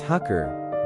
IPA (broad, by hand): ˈhæŋkər